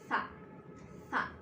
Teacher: Huruf tha ini lidah kita di tengah-tengah diapit oleh gigi atas dan gigi bawah kita.